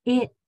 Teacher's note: the t is actually a stop sound where your tongue stops the air from coming through